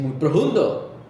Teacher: mayoría pronuncian la f aspiradas